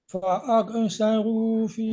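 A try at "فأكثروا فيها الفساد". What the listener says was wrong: Jangan mantul. Terus ya, tapi tadi peringatannya di huruf kaf, tidak boleh mantul ya.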